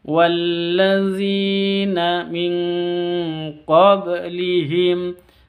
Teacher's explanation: nun sukun bertemu dengan qaf, bacaan samar disertai dengan dengung, ikhfa hakiki. Min qab ba sukun berarti qalqalah sughra, ada di tengah kata.